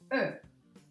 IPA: ɜː